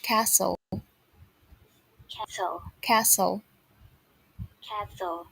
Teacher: there's no t sound